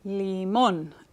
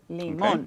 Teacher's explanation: Yo escucho énfasis al final.